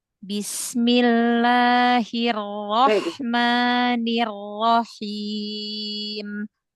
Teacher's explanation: Lembutkan lagi ro tasdidnya. Jangan dinaber.